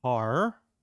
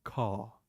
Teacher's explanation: in British English R is very soft and more often than not we drop the r